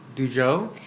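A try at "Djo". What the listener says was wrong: It's just Joe. The D is silent.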